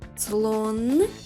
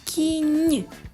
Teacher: в слові слон н тверда і ми позначаємо її однією рисочкою а в слові кінь нь м'яка приголосна позначається двома рисочками поставте відео на паузу і зробіть звуковий аналіз